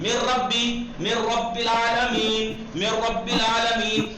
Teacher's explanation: गुन्ना भी नहीं है, खींचना भी नहीं है।